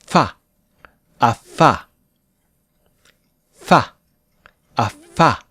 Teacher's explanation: We make the f sound with our bottom lip and upper teeth. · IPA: /f/